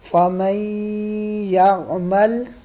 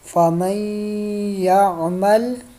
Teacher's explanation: یہ دیکھیں یہ مڈل میں جو نون ہے جس کے اوپر جزم نظر آ رہا ہے آپ کو، نون ساکن ہے، تو اس نون کو اگنور کریں گے، کیوں؟ اس لیے کہ اس کے بعد یا کے اوپر شد ہے